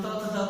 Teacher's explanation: जब भी हम लोग बोलेंगे, जब हम त थ द बोलेंगे, जो हमारी जीवा होती है वो हमारे दंत में मतलब हमारे दांतों में सटकर जो है इसका उच्चारण किया जाता है, इसलिए उसको दंत बोलते हैं।